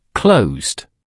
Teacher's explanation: The last sound is s which is voiced. The past tense is closed. pronounced closed. It's a smooth buzzing ending.